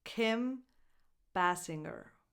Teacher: Lax [ɪ] as in the word “it”.